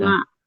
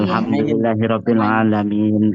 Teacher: Itu kan kalau di daerah Jawa khususnya itu kan sudah terbiasa tuh orang-orang apalagi kalau di kampung-kampung itu, misalkan dia mengucapkan huruf ain jadi nga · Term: logat Jawa